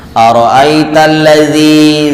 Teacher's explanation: zi dibaca panjang, disebutnya mad tabi'i, mad panjang tabi'i asli atau murni